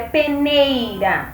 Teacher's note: A sílaba tônica da palavra peneira é o nei, ela é uma palavra paroxítona. Então, P e o Rá são as sílabas átonas.